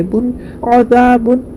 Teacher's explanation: بن میں اظہار ہوگا، تنوین کے بعد حروف حلقی میں سے عین ہے تو نون کی آواز کو ظاہر کر کے بغیر غنہ کے جلد پڑھیں گے